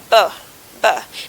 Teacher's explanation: Now you notice that the organ of speech obstructing the airflow is the two lips.